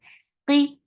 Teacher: for qaf, make it heavy. For kasra, give e sound